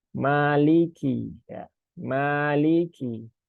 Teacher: huruf Kaf itu salah satunya dia punya sifat hams ya hingga ada aliran udara tapi kecil ya tidak berlebihan